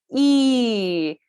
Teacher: So we're moving in this direction from closed to open, and in this direction from front, mid to back. So this vowel, E, is closed, and our tongue is pressing forward in our mouth.